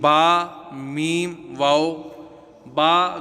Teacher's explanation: बा दोनों होठों के तर हिस्सा से